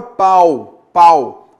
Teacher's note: então eu tenho vogal A e semivogal U